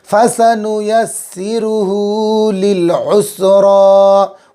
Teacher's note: उल्टा पेश है, खींचेंगे, उल्टा पेश वाव मद्दा काम देता है।